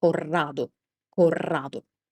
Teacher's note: Here we have a double D sound, double R sound, so you need to keep the R sound for longer.